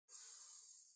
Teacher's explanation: on the S there should be no vibrations it's only air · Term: S sound